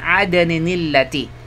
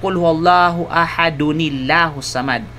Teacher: kapag ang tanwin ay nauna sa hamzatul wasal, kung gayon ang nun nito ay magkakaroon ng patinig na kasra.